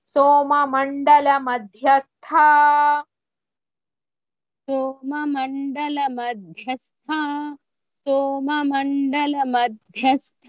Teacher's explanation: సోమండల మధ్యస్థ ధ and థ both are మహాప్రాణస్ · Dha and tha both are mahapranas.